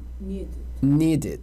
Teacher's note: daí o som é de id, curtinho